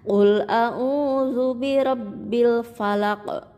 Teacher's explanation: huruf qaf yang disukunkan atau diwakafkan atau diberhentikan dan dibacanya memantul. Itu namanya qalqalah. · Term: qalqalah kubro